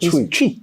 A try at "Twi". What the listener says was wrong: Is it CH or Twi? So why are you not pronouncing the T?